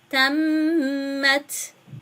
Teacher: Buradaki mimi bir miktar gunneliyoruz.